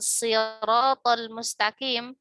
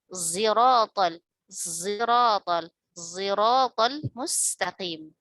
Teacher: Ismam sod itu gabungan sod dengan zai